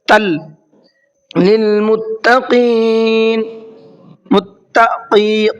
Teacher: قاف کو منہ بھر کے پڑھنا ہے